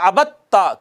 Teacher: جیسے عبد تا کی مثال پڑی تھی، عبد تا میں دال اور تا دونوں حروف نطعیہ میں سے ہیں، ایک ہی جگہ سے ادا ہوتے ہیں مگر اکٹھے آئے ہیں، پہلا ساکن ہے دوسرا متحرک ہے تو پہلے کو دوسرے میں ضم کر دیں گے اور ہو جائے گا عبدتا۔ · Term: متجانسین